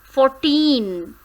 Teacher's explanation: 14 is made up of 2 syllables, 4 and teen. but the stress is on the second syllable, that is teen.